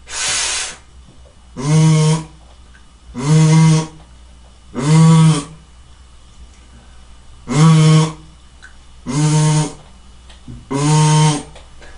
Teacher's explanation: F 발음은 무성음이어서 아까 공기만 나왔었지만 이제 V 발음은 같은 형식 순치 마찰인 것 같지만 유성음이라는 차이만 있습니다. 자, 무성음과 유성음의 가장 큰 차이, 무성과 유성의 가장 큰 차이는 무성음은 공기만으로 소리를 만들어 주는 것이고 유성음은 공기 플러스 성대 소리를 성대 울림으로 소리를 만들어 주는 거예요.